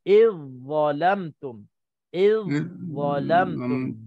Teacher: Za masuk ke dalam za.